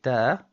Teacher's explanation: the letter ta, for example, is a tarqeeq letter. It's a flat letter. · the letter ta has something called hams in tajweed, which means the release of air.